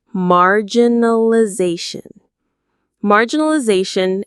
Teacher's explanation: stress is on that zah syllable near the end